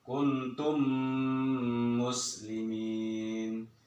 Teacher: Cara bacanya itu memasukkan dengan dengung, artinya ditahan dia. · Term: idgham mimi